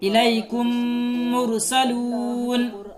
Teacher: تیسرا قاعدہ ہے ادغام شفوی کہ جہاں کہیں بھی میم ساکن کے بعد میم آیا ہے تو میم ساکن کو میم سے ملا کر غنہ کے ساتھ پڑھا جائے گا